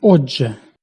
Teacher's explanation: У слові «отже» глухий «т» переходить у дзвінкий «д» і, зливаючись із «ж», переходить в фрикату «дж». Відповідно, у цьому слові кількість букв 4, а звуків 3. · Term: уподібнення за дзвінкістю